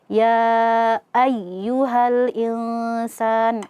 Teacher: Nabar itu adalah penekanan suara. Jadi kita tekan suara kita ketika mengucapkan ya yang bertasydid.